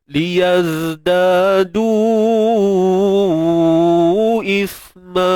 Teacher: Untuk sa kita matikan dia macam biasa, cuma keluarkan sedikit hujung lidah.